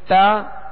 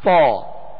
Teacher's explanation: تا کو باریک پڑھیں گے اور تو کو پر یعنی موٹا پڑھیں گے